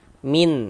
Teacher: Nah, karena di sini yang kita temui nun sukun, bunyi nun sukunnya kita baca jelas. Kemudian tidak kita dengungkan, tidak kita gunnahkan, maka dibaca pendek saja.